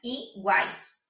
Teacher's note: É o A, porque o U tem um som fraco e o I tem um som fraco. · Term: tritongo